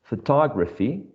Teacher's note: photography which has four syllables and the second one is the most salient one